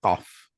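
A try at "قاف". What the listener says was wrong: QAF. I want to hear the F also.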